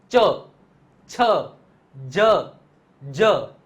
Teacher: જે જીભ છે એ તાળવાને સ્પર્શ કરે ઉપરનું જે તાળવું છે ને એને સ્પર્શ કરે તો એને તાલવ્ય કહેવામાં આવે એના પછી જે નેક્સ્ટ ફેમિલી આવે